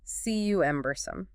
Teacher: Stress on the first syllable. Yep, 3 syllables.